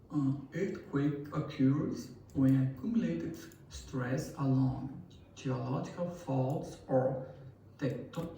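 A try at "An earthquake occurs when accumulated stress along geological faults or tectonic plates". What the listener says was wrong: See the pauses, there are natural pauses where you shouldn't be pausing.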